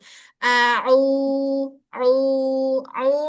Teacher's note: ain keluar dari tenggorokan bawah tengah. Au, sempurna dari al-jauf, saat dia domah dan saat dia mat ya.